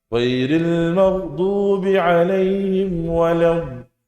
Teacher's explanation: Memanjangkan makhraj huruf dhad dari tepi lidah sampai ujungnya, sampai akhirnya, hingga menyambung dengan tempat keluarnya huruf lam. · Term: istitalah